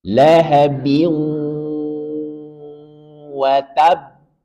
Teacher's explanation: Dia ada gunnah, idgham bi gunnah, maka berikan gunnah yang paling sempurna.